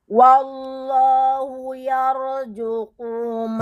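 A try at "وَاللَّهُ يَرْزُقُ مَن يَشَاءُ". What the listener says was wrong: Zu dong, bukan ju, bukan ju. Zu.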